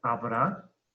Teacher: la palabra habrá es una palabra aguda, porque lleva el acento en la última sílaba.